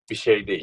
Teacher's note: You don't read R here, okay?